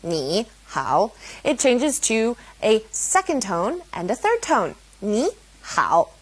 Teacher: if it's a third tone and a third tone next to each other, ni, hao, it changes to a second tone and a third tone